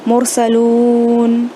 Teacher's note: کیونکہ یہاں پہ سیکنڈ لاسٹ واول لیٹر ہے which is followed by آیت، تو آیت کے پہلے ہونے کی وجہ سے، سیکنڈ لاسٹ واول ساکن ہونے کی وجہ سے ہم نے اس کو کھینچ کر پڑھا